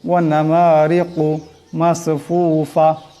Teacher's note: কাফের আওয়াজটাকে মোটা করিয়া পড়তে হবে